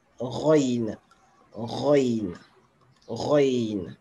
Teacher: C'est comme les Français qui roulent le R là. Au lieu de le prononcer avec la langue, ils le prononcent avec la gorge. C'est ce qu'on appelle rouler le R.